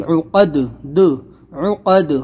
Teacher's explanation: تینوں میں ہمیں قلقلہ کرنا ہے، یعنی ان کے مخرج ٹکر کھا کر الگ ہو جائیں گے